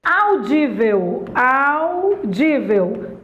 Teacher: É uma paroxítona terminada em ditongo, mas é uma paroxítona. Audível, audível, também a penúltima sílaba, também é uma paroxítona.